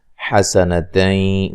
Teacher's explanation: نون تنوین کا ادغام مع الغنہ ہے